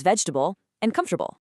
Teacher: natural American speech absolutely loves to swallow middle syllables. They crush these 4-syllable monsters right down to 3